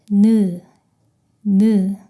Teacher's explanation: 느 소리가 납니다. 혀끝이 앞니 위쪽 잇몸에 닿았다가 떨어지면서 소리를 냅니다. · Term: 니은